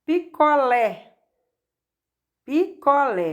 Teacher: Aqui nós temos 3 sílabas, sendo a mais forte é o lé, que é a última sílaba da palavra picolé, e é terminado com a vogal E, por isso é oxítona.